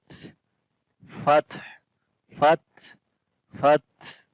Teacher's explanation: تا کے اندر صفت شدت اور ہمس دونوں ہوتی ہیں ، تو پہلے شدت جب کریں گے تو آواز بند ہو